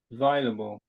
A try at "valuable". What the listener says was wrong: It sounds like available. It sounds like you're saying valuable.